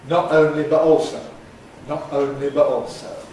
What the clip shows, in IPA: ˈnɒʔ ˈəʊnli bəʔ ˈɔːlsəʊ